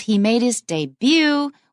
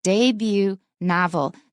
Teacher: Now you look at the word debut, usually we say debut when it's by itself, but if we have a word after it, we'll switch the stress